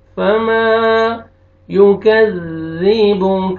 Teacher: अलिफ से पहले ज़बर है, मीम को आपने खींचना है , फमा युकज़्ज़िबुक, काफ को बारीक करके पढ़ना है और ज़ाल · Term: अलिफ मद्दा